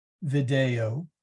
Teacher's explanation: short E in all. Except for the video, the E is long.